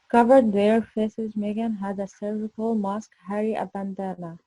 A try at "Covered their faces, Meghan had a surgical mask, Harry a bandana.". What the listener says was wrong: Very, very good for the first time.